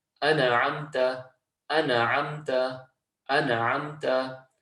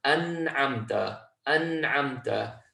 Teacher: So just completely closing off that noon, so that there's no qalqalah, there's no bounce on that letter.